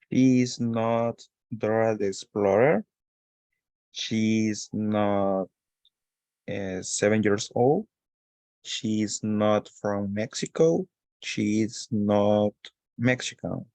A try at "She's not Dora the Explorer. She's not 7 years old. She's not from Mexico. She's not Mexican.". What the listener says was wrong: Excellent, very good.